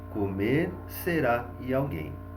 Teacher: sílaba tônica na última sílaba ou seja todas as palavras oxítonas